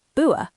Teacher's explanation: Cockney, for example, uses glottal stops, so butter can become bua